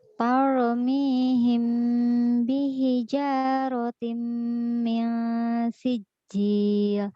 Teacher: Ro'nya tebal, jangan tar.